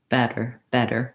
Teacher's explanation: t so i lift my tongue up into that tnd position my voice is on like it is for a d but i don't build up a lot of pressure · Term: flap t